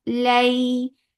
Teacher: This is yailin, so make it soft and make it two counts long.